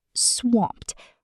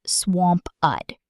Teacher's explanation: Notice the mp sound blends together quickly. Swamped, almost like one syllable, not swamp-ud.